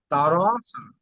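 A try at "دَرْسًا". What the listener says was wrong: টান হবে না? দারসা। ঠিক আছে, তাহলে এমন ভাবে রা আর বলতে পারবেন না, রা বলতে গেলে বারিক হয়ে যাবে। রা। হ্যাঁ, র বললে তাহলে পুরো হবে, রা বলতে গেলে বারিক হয়ে যাচ্ছে। তাহলে এখানে রটা কেন পুর হচ্ছে, হ্যাঁ, রয়ের উপরে যাবার এসেছে তাই রটা পুর হচ্ছে।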